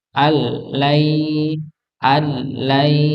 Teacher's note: Idam bila bila ghunah maka ini sama sekali tidak ada dengungnya ini sama sekali tidak ada dengungnya maka Nun ini tidak dianggap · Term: Idam bila gudah, idgham bila gunnah